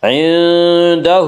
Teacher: ہے، الٹا پیش قائم مقام ہے وا مدہ کے، اس لیے الٹا پیش کو ایک الف کے برابر کھینچ کر پڑھیں گے